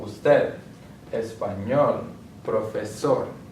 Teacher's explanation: And palabras agudas, they have the word stress on the last syllable.